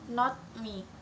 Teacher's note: when T is followed by M, it usually changes into a P sound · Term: assimilation